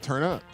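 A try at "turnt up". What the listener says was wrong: Yeah, it's turnt, man. They were very specific. They wanted the T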